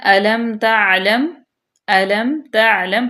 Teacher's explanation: اس کے بعد ہے علم تعلم، علم تعلم، حمزہ بھی باریک، لام زبر میم لم، تعلم، میم ساکن کے بعد یہاں پہ اظہار شفوی ہو رہا ہے